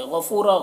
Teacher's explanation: غین کو پر پڑھنا ہے، فو میں واو مدہ ہے، 1 الف کے برابر کھینچیں گے۔